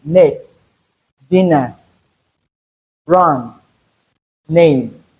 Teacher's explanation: That is the alveolar nasal sound, as in net, dinner, run, name. So we can have the sound at the beginning of word, that's word's initial, word medial position, and word final position.